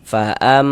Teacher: Jadi di bagian fa'am, suaranya itu kita tahan ya, kita panjangkan sejenak. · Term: gunnah musyaddadah